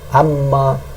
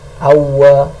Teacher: cuma beza antara mim dengan waw, mim dia kena tutup, waw dia kena terbuka sikit. Dia bukan terbuka, dia muncung.